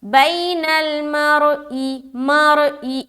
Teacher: मीम और रा जबर मर, हमजा जेर ई, मरई, बैनल मरई, यहाँ पर रा को मोटा करना है क्योंकि रा साकीना से पहले जबर आ गया